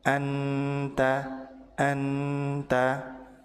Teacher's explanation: Ujung lidah menempel ke langit-langit depan atau di makhraj huruf nun sehingga nun terbaca jelas atau idhar. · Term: izhar